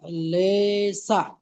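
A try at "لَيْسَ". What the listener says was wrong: লে সা নয়, লাম ইয়া জাবার লাই, সিন জাবার সা। লাইসা, লাইসা।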